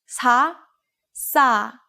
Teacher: it sounds like the s sound in sa is being held a little bit longer